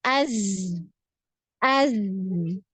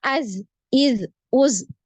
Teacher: ya aliran suaranya ketika sukun jadi ketika sukun ini dialirkan ya huruf Zai ini dialirkan ketika sukun panjang